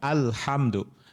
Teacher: Idhar qamariah itu dia jelas bunyi l-nya jelas